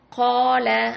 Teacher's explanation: ஸோ 2 அலிஃப் அளவுக்கு நம்ம நீட்டி ஓதணும் · 2 ஹரக்கத் அளவுக்கு நம்ம மத்து செய்யணும்